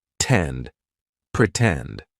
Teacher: In the word pretend, the stressed syllable starts with T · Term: true T sound